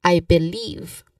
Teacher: So stress and believe, especially or specifically, we stressed on the second syllable of believe, which is leave